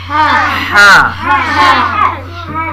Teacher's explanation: اور یہاں پہ ہا نکل رہا ہے، یہاں سے ہا، ہا بالکل حلق سے نکالنا ہے